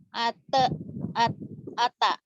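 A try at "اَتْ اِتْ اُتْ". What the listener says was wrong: Enggak, jangan ati. jangan di ati kan tanya mati. Lihat mulutnya. At, it, ut. At, it, ut. At, it, ut. At, it, ut. At, it, ut.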